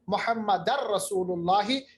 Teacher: फिर दो ज़बर को रा के साथ मिलाएंगे तो इदगाम होगा